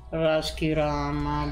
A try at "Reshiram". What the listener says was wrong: Raskiram, non è Raskiram. Reshiram.